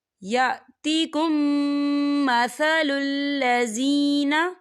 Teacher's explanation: یا دیکھیں یأتکم، یہاں میم ساکن ہے اور میم ساکن کے بعد پھر میم آ رہا ہے، تو یہاں پر ادغام شفوی ہوگا اور ہم اسے غنّے کے ساتھ پڑھیں گے